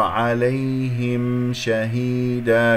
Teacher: الهاء مكسورة، الميم مظهرة ، عليهم شهيدا، كسرة الهاء، نقف على مد العوض بمقدار حركتين،